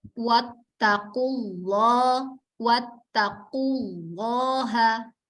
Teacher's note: Monyong dulu, kemudian ke lam, ditarik.